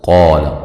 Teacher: قاف کو موٹا، الف مدہ ہے ، آ مد اصلی ہے، یا